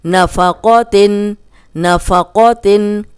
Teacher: قوف موٹا ہے تو زبر کے ساتھ بھی ہم اس کو موٹا ہی پڑھیں گے